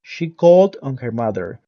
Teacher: with no stress on the preposition on